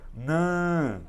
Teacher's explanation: Olha o som saindo pelo nariz, ó. Nã, som nasal.